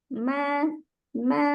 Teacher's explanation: sifat gunah sifat dengung ya dengung ini keluar dari rongga hidung kita kita kita pegang Ma maka akan bergetar rongga hidung kita Nah